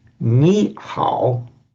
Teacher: when you get a third tone followed by a third tone, the first one becomes second tone. So ni hao becomes actually ni hao. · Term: tone sandhi